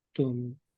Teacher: tidak dibaca abadatum, tapi dia langsung masuk ke huruf ta.